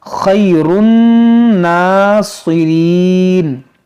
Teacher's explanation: علی اعقابکم فتنقلبوا خاسرین بل اللہ مولاکم وَهُوَ خَيْرُ النَّاصِرِينَ، یہاں پر بھی دیکھیں نون میں غنہ کریں گے کیونکہ نون مشدد ہے، اور یہ صاد حروف مشتعلیہ، اس کو موٹا کریں گے۔ ناصرین، بعض لوگ اس کو کیا کہتے ہیں؟ ناصرین، سین سے، تو آپ کو سین سے نہیں صاد سے پڑھنا ہے